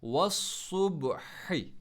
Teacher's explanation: ہا کو middle throat سے پڑھنا ہے